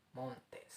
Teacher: Kita kasih dia stress di mount, kita kasih unstress dia di tains.